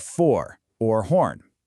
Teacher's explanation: Notice how your mouth kind of gets round when you say that or. That's the bossy R hard at work.